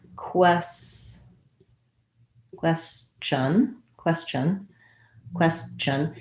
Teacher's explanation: a little bit of a schwa before n